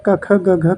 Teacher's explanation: क, ख, ग, घ किस उच्चारण स्थान के व्यंजन है? तो ये हो जाएंगे कंठ